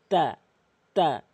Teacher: জিব্বার আগা দুই দাঁতের গোড়া